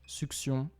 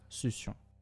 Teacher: We'll leave succion be as it can be pronounced both su/ks/ion and su/s/ion.